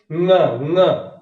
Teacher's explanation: हाँ, इनके उच्चारण के बारे में आप समझ लीजिए, नासिक के जितने होते हैं उनका उच्चारण जब करेंगे तो नाक में झंझनाहट सी महसूस होगी, हवा नाक से जाएगी